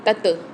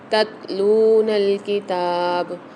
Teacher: تتلون الکتاب، اچھا یہاں پر ایک چیز کا خیال رکھیے گا کہ تا کے اندر قلقلہ نہیں ہونا چاہیے، کیونکہ صرف ہم تو میں قلقلہ کرتے تت، یہ والی آواز نہیں نکلنی چاہیے اس میں۔